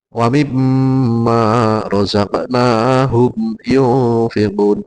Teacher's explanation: Humu. Itu juga izhar syafawi yang harus dijelaskan bacanya mim sukunnya